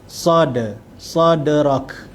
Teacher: Kemudian sad, sadrak, dia ada qalqalah, sad, dal yang mati, qalqalah sughra. Huruf dal, huruf qalqalah yang berada di tengah kalimah, yang mana kita matikan huruf dal itu dengan ada lantunan sedikit.